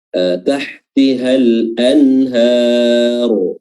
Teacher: lam bertemu dengan hamzah dibaca jelas, lamnya al-anhar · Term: alif lam al-qamariyah